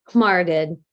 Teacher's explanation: You're blowing a lot of air out of your nose in order to get that nasal moving.